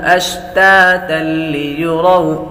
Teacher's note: تا پر تنوین ہے، تنوین کے بعد لام حروف یرملون میں سے آ رہی ہے تو غنہ نہیں کریں گے۔